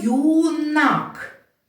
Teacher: коли буква ю стоїть на початку слова вона розкладається на два звуки й у